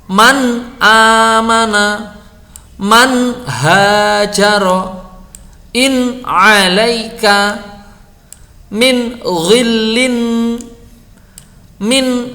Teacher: kita membacanya nun itu jelas sekali, terang benderang, dan kita tekan hunahnya itu kita tekan, jadi tetap ada. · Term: idhar